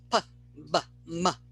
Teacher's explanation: These are all produced so the airstream stops at the lips, giving us what is known in linguistics as labial or lip sounds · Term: labial consonants